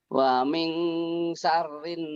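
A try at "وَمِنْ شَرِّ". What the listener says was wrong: Shinnya hutangmu nih. Wa min mulatnya dibuka lebar, bukan dimonyongin, bukan munyunyu, bukan, tapi lebar kayak orang lagi gosok gigi.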